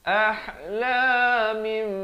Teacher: Apa maksud iqlab? Ditukarkan daripada bunyi nun kepada bunyi mim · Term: hukum iqlab